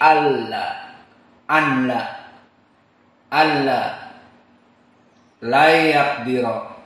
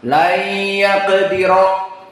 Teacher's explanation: tidak ada makhraj dari khaysum dan tidak ada gunnah. Berarti dibaca pendek, tidak dua harokat. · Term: idgham bila gunnah